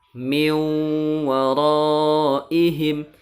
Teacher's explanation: Nun sukunnya dimasukkan ke huruf wawu dan ditahan 3 harokat suaranya